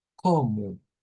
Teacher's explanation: Y ahora vamos a la palabra como, como, que es de estas que hemos dicho que llevan O al final y la O se convierte en una U